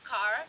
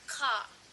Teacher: The R sound is typically not pronounced after a vowel within a syllable. For example, when they pronounce car, the the letter R did not pronounce by them like car like that.